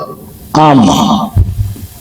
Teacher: মিম উভয় ঠোঁটের শুকনো অংশ হতে উচ্চারিত হয়